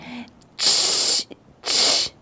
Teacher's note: É quando tem um chiado, mas antes desse chiado tem uma explosãozinha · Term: africada